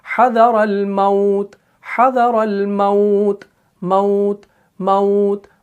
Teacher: वहां पर जो ये वाव साकिन है उसे वाव लीन कहा जाएगा जिसे नरमी से अदा किया जाता है। हदर अल मौत, हदर अल मौत, मौत मौत, हदर अल मौत वल्लाहु मुहीतुम बिल काफिरीन।